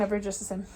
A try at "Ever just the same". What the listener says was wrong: That was pretty, but it needs to be more in the low mid range.